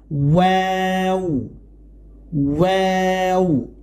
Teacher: ওয়াও না, এটার উচ্চারণ হবে প্রথমে ঠোঁট গোল হবে, তারপরে সম্পূর্ণ মেলে যাবে, আবার গোল হবে